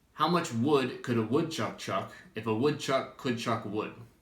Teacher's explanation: you don't pronounce the L in modal verbs like could and would.